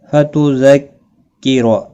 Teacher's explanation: रा ज़बर की वजह से पुर पड़ा जाएगा